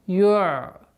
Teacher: Айн при сукуне, как мы говорили уже, неоднократно повторяли, мягкая, не интенсивная остановка.